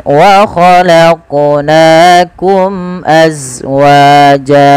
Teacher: Pantulkan lafal qaf karena dia qalqalah